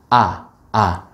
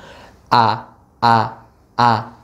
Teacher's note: Nah, kemudian, itu tadi supaya kita lebih yakin lagi suara itu benar-benar keluarnya tidak dari khoisyum, tidak dari rongga hidung, tidak ada suara atau nafas yang keluarnya dari hidung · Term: huruf hamzah